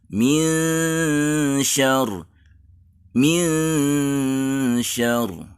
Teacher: Bunyi min ada di tengah lidah karena shin huruf tengah lidah, mirip dengan ikhfa bertemu dengan jim yang juga sama-sama huruf tengah lidah.